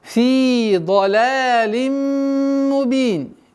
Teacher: При остановке аннулируется танвин кясра. Уходит в сукун. И долгота появляется у нас в размере 2 огласовок кясры.